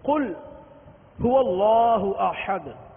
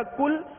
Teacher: ہم پڑھتے ہیں قل هو اللہ احد، قل قاف کے ساتھ، گول قاف، اس کا معنی ہے کہ اے محبوب تم کہو، تم فرما دو وہ اللہ ایک ہے، تم فرما دو وہ اللہ ایک ہے۔ اب اس قاف کو پر کر کے نہ پڑھا، پر کر کے نہ پڑھا اور اس کو باریک پڑھا تو یہ بن جائے گا کل